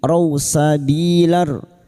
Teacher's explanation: raw fathah bertemu waw sukun kita lunakkan huruf lin